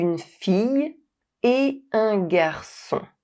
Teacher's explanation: The final T of “et” never comes to life with the liaison, it always remains silent. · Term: liaison is forbidden